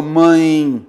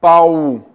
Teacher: Eu tenho então o chamado de ditongo decrescente, porque eu tenho uma vogal, que é o som mais forte, e uma semivogal, o som mais brando, beleza? Por isso houve aí um decréscimo do som.